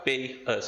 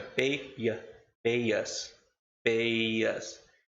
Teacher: Pay termina com som de I e us começa com som de vogal. Então não vai ficar pay us, fica pay ya, pay us, pay us. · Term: Y insertion